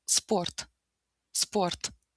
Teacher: em russo essa palavra começa com s, ou seja, não tem um e no início